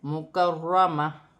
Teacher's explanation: را مشدد ہے، موٹا پڑھا جائے گا